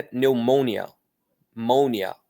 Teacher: Para eles tem força no mon. Aí depois que a força está no mon, tudo fica mais rápido.